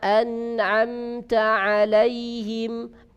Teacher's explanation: Keluar yang suara kayaknya bukan hanya dari mulut, tetapi juga ada bagian lain yaitu dari hidung. Suara dengung kalau kita bilang ya.